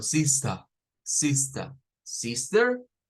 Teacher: solo aparece el sha y no está la r